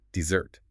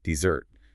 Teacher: for dessert, the sweet course after a meal, the stress is firmly on the second syllable.